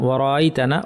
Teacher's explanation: নুনের উপর তাশদিদ একটু লম্বা গুন্না করতে হবে। এরপরে আলিফ এখানেটা টান হবে।